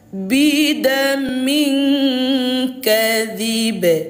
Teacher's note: Jadi ayah bunda kalau sudah berjumpa dengan huruf yang berwarna ungu kayak gini, maka cara membacanya pantulkan. Pantulannya karena ini qalqalah kubro, pantulannya kuat tetapi tipis.